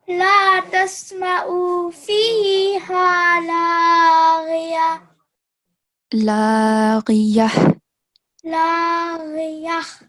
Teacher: When you're making a pause, the sound of ha should be clear.